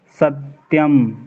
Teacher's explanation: अब सत्यम में हर कोई दो ही था बोलता है पर कभी गौर नहीं किया कि लिखा एक है दो क्यों बोला जाता है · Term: बलाघात